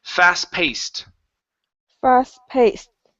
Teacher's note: fast paced ok so here again we have the s okay T and then a p so the t is gonna disappear